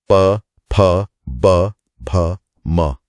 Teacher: इन्हें तो बिना होठ मिलाए बोल ही नहीं सकते। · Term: प वर्ग